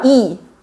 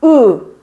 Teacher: 자 그래서 이한 상태로 뒤로 당기면 으가 돼요